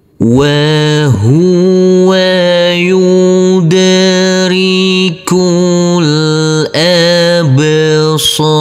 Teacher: Huruf dal di sini kita pantulkan karena ini adalah bacaan qalqalah. Huruf kaf langsung masuk ke huruf lam yang ber sukun.